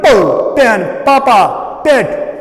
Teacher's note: So it is called bilabial, but it is plosive, because the lips, they separate abruptly.